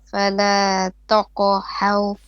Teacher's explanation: Ha is flat and ra is heavy. So you have flat, heavy, flat, heavy.